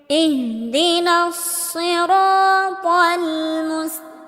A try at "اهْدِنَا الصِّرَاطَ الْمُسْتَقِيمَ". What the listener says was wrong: এখানে ছোট হা এখানে ছোট হা উচ্চারণ করতে হবে। বলা যাবে না। ইহদিনাস সদটাকে মোটা করে উচ্চারণ করতে হবে। ইহদিনাস সিরাতাল ত মোটা করে উচ্চারণ করতে হবে, তাল হবে না, সিরাতাল হবে। সিরাতাল মুস্তাকিম, মুস্তাকিম না, মুস্তাকিম।